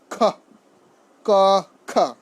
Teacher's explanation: মহাপ্রাণ মানে হচ্ছে শ্বাস বেশি, প্রাণ মানে হচ্ছে বাতাস, প্রাণ মানে হচ্ছে বায়ু বা বাতাস। মহাপ্রাণ বর্ণগুলো উচ্চারণ করার সময় বর্ণের সঙ্গে হ যুক্ত হয়ে ধাক্কা দিয়ে উচ্চারণ করতে হয়।